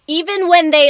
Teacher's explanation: native Tagalog speakers will naturally say kamusta ka with an A sound